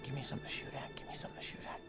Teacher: First, he merges give and me into gimme. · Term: reduction